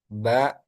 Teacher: keluarnya ba itu dari kedua bibir dalam keadaan tertutup. Jadi, bibir atas dan bibir bawah menyentuh.